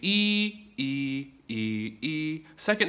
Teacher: first tone is even it's flat